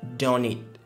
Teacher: au niveau de don't et eat, on a cette liaison qui est faite